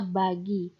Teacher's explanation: B merupakan bunyi bersuara, Contohnya pada kata bagi.